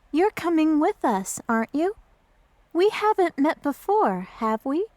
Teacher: notice the rising intonation in tag questions to confirm information